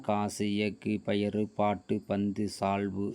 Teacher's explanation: எழுத்துக்களாக கசட தபர என எழுத்துக்களுடன் உகரம் சேருகின்ற பொழுது குசுடு என்று மாறும் ஒரு சொல்லினுடைய இறுதியில் வரும் பொழுது ஒரு மாத்திரை அளவிலிருந்து குறைந்து அரை மாத்திரை அளவாக ஒலிக்கும் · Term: குற்றியல் உகரம்